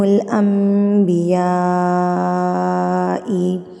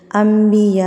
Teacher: انبیاء کے اوپر بڑی مد متصل، جس کو بڑی مد کہتے ہیں، اس کو آپ نے 4 حرکات کے برابر لمبا کر کے پڑھنا ہوتا ہے